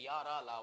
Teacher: या का उच्चारण स्थान आपका तालु है, रा का मूर्धा है, ला का दंत है, वा का दंतोष्ठ है। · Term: अंतस्थ व्यंजन